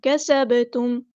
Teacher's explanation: ایک الف کے برابر لمبا کریں گے، کسب تم نہیں پڑھنا، سین تھیٹی واضح کرنی ہے اور با ساکن پہ کلکلا کرنا ہے، اس کو ہلانا ہے